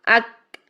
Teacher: पीछे ज़ुबान की जो जड़ है ना, मोटा हिस्सा, वो ऊपर तालू को लग रहा है, सख्त वाले तालू को लग रहा है। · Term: काफ